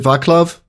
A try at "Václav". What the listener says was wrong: No, actually it's Václav. So you don't pronounce it as K, but as a C, as in word circle.